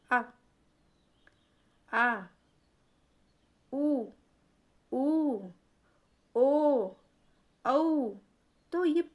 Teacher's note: आ का उच्चारण पीछे से हो रहा है आ आ उ ओ औ पीछे हिस्से से जीभ का पीछे वाले हिस्से से इसका उच्चारण हो रहा है। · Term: पश्च स्वर